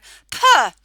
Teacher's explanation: even as teachers, we go p and we add a schwa